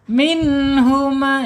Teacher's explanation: ada mim secara makhraj ada di asyafatain, 2 bibir